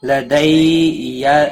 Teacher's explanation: یا لین ہے، تھوڑا نرمی کے ساتھ کھینچ کر ادا کریں گے.